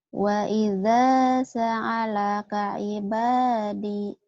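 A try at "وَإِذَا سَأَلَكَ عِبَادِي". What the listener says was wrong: Sa'alakanya itu bukan ain tapi alif, ya ulah lepat. Wa idza sa'alaka ibadi ulah dihandi.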